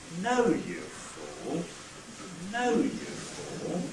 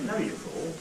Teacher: If we've got more than one syllable in the nuclear accent group, if we've got some tail syllables as well, then what happens is that we fall on the nucleus itself, level out for the beginning of the tail, and then rise at the end of the tail. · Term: fall rise